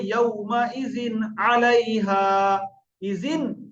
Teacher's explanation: দেখেন এখানে জালে নিচে দুজের তানবিন আছে, তানবিনের পরে আইন এসছে, তাহলে এখানে কোন রকম গুণনা না করে ইয়াউমা ইজিন আলাইহা, ইজিন, এই যে ইজিন পড়ছি নুনটা পুরো জাহির করে দিচ্ছি, কোনো গুণনা করছি না, এর নাম ইজহার।